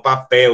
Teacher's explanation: no final da palavra tem som de u